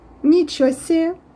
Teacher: I make the last sound longer meet you see and another way is making the first sound